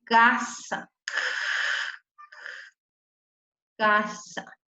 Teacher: es velar porque la voy a pronunciar con el velo de la boca. Y digo yo que es sorda porque no me van a vibrar las cuerdas vocales.